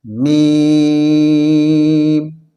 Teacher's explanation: یہ دونوں ہونٹ ہیں، دونوں ہونٹ کے خشکی والا حصہ جو سوکھا والا حصہ ہے وہ دونوں ملنے سے میم ادا ہوتا ہے